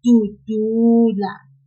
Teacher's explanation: we will pull the second du, just a little